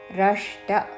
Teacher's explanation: రష్ట మూర్ధన్య షాకి అల్పప్రాణ టావత్తు